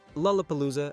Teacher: It contains 4 L sounds, in rapid succession. At the beginning of syllables, lu, pu, lu, zu.